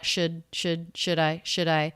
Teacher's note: the d is a flap sound because it comes between two vowels or diphthongs the l is silent here so it comes between the schwa